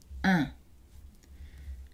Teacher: La voyelle un est une voyelle antérieure, mi-ouverte, non arrondie et nasale. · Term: voyelle nasale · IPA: [ɛ̃]